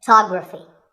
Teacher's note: we say photograph but photography so the first syllable becomes and the stress goes to the second syllable photography